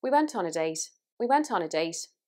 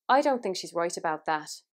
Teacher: t sounds will have more breath on them so words like but and that and for example bite and bit they'll have like more breath over them